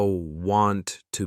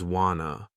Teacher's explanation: how the speaker links words together, like how want to becomes wana